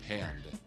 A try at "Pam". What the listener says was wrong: an M. There's no D. It's Pam. Here, it's P. M. No, there's just one M.